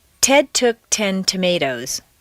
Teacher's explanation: When a T is at the top of a staircase in a stressed position, it should be a clear, popped sound.